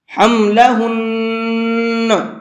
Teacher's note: نون کے اندر بعد میں ہلکی سی آواز نکلے گی، کیوں؟ اس لیے کہ نون کے اوپر تشدید ہے، اور جس لفظ کے اوپر تشدید آتی ہے وہ لفظ ڈبل پڑھا جاتا ہے، تو یہاں پر جب ہم وقف کریں گے تو تب بھی اس کو ڈبل ہی پڑھنا ہے، اس کا ساؤنڈ ڈبل ہی نکلے گا، حملہن، اس طرح سے۔